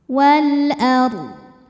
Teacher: Kemudian ada alif lam qamariyah karena alif lam menghadapi huruf qamariyah yaitu hamzah. Maka lam dibaca jelas.